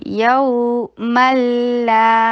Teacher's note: यऊ मल्ला ये इदगाम हो रहा है बगैर गुन्ना